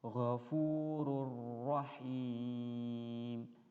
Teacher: beredengung ya contohnya [Musik] gofururahim ya Nun mati di tanwin ini suaranya itu hilang dimasukkan ke dalam suara ro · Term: tanpa berdengung